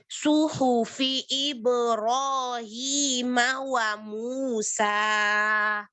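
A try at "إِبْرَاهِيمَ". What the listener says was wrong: Ibrahim. Hi lebih di apa ya? Lebih bergema sedikit. Jadi huruf H-nya yang kurang pol.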